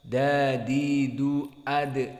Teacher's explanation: Maka dari sifatnya adalah jahr dan syiddah. Maka kalau dal ini sifatnya al-jahr, makna al-jahr adalah inhibas as-saut wa syiddah inhibas an-nafas wa syiddah inhibas as-saut.